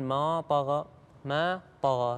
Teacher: لا تفخم الألف قبل الطاء، تقول ما طغى ما طغى، بعدين الحرف الطاء ندخل عليه اللي هو المفخم، أما قبلها الألف مرققة ما طغى، فما تأثر الطاء على الألف نقول ما طغى تمام.